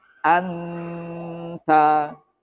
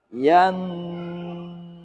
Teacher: Dengungnya suara ikhfa hakiki ini tidak sama antara satu dan yang lainnya. Mengikuti huruf yang ditemui.